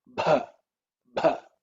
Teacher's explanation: which is the fourth letter in the pa varga, with a lot of air, mahaprana. Ub plus gives us bha, bha.